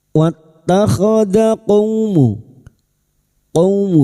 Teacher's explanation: qaumu fathah bertemu wawu sukun kita lunakkan huruf lin